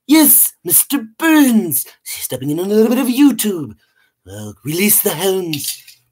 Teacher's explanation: when I do the voice of mr. burns it requires that I tighten my neck and my vocal cords